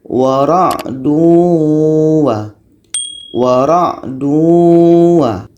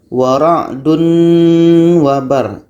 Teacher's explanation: Tanwin hilang menjadi masuk ke waw. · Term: idgham